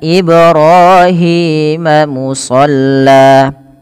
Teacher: pantulkan pada lafal bacaan Ibrahim karena ada bacaan qalqalah, yaitu ketika huruf-huruf 5 yang 5 ini ba, jim, dal, to, dan qaf, kelima huruf ini berharokat sukun, maka diperlukan dipantulkan ya, maka harus dipantulkan.